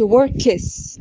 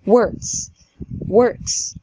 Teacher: احنا لو حطينا ايدينا على الحنجره واحنا بننطق مش هنحس بالفايبريشن ده، فلما نيجي ننطق الاس بتاعت works هتفضل س هي كمان من غير اهتزاز